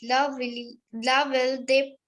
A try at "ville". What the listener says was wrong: First of all, it's not will, it's V. Double L is silent here. La vie de Paris.